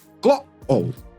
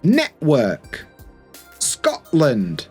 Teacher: So a glottle stop happens when the t sound is replaced by a small pause in your throat. The vocal cords close for a moment instead of pronouncing the full t sound.